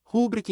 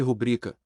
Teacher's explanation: sílaba tônica em bri